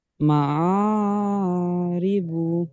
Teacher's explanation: আলিফের উপরে খারা জবর এসেছে, খারা জবর আলিফ মাদ্দার সমতুল্য, সুতরাং খারা জবরকে আলিফ মাদ্দার মতো এক আলিফ পরিমাণ টান দিয়ে পড়তে হবে।